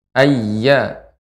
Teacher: Ayya tidak boleh terlalu panjang Ibu. Hanya ya hanya di ayun saja.